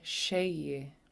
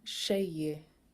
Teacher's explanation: the high tone is on the first vowel